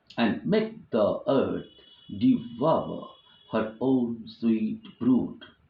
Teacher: there is a strong iambic rhythm in these lines